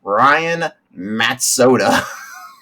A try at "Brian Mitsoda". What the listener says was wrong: You said Matt Soda, but there's no A.